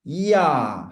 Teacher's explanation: 이야 할 때 입이 벌어져요. 이야 할 때 입이 벌어집니다. 울림도가 커지는 거야. 공명도가 커진다고 얘기하는 거야. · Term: 상향